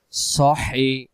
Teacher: লম্বা হা হলকের মধ্য থেকে শোষ করে পড়তে হয়